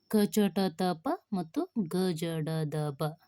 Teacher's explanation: ಅಲ್ಪಪ್ರಾಣಗಳು ಅಲ್ಪ ಪ್ರಾಣಾಕ್ಷರಗಳು ಅಂದ್ರೆ ಅಲ್ಪ ಅಂದ್ರೆ ಕಡಿಮೆ ಪ್ರಾಣ ಅಂದ್ರೆ ಉಸಿರು ಅಂದ್ರೆ ಕಡಿಮೆ ಉಸಿರಿನಿಂದ ಉಚ್ಚರಿಸುವ ವ್ಯಂಜನಾಕ್ಷರವೇ ಅಲ್ಪಪ್ರಾಣಾಕ್ಷರಗಳು ಅಥವಾ ಅಲ್ಪಪ್ರಾಣ ಇವು ವರ್ಗದ ಮೊದಲ ಮತ್ತು ಮೂರನೇ ಅಕ್ಷರ ಅಕ್ಷರಗಳನ್ನು ಅಲ್ಪಪ್ರಾಣಗಳೆಂದು ಕರೆಯುವರು